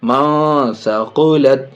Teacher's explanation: لام تا زبر لت، منسقلت. نون ساکن کے بعد سا حروف اخفا میں سے ناک میں آواز چھپا کے یہاں بھی پڑھیں گے